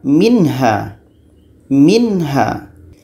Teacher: Karena izhar halqi tidak dibaca dengan dengungan.